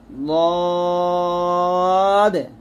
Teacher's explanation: জিহ্বার গোড়ার কিনারা উপরের মারি দাঁতের গোড়ার সঙ্গে লাগিয়ে একটি হরফ উচ্চারিত হয়, তা হচ্ছে লদ, মোটা করে উচ্চারণ করতে হবে